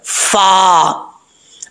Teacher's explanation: اوپر والے جو 2 دانت ہیں ان کا کنارہ نیچے والے ہونٹ کی تری والی جگہ پہ لگے گا تو فا پڑھا جاتا ہے